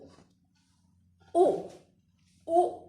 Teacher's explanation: उ बोलने पे होठ जो हमारे ओठ हैं वो गोल होते हैं, तो उ बोलने में ओष्ठ का प्रयोग होता है।